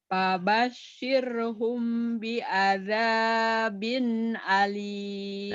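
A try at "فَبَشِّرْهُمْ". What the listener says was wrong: Nah, tinggal nanti dilatih shin-nya. Fabashirhum bi'adzabin alim. Coba shin. Shin-nya gede. Fabashirhum.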